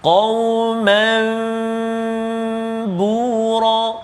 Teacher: menukar sebutan nun sakinah ataupun tanwin kepada sebutan bunyi mim, sebutan mim berserta dengan dengung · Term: iqlab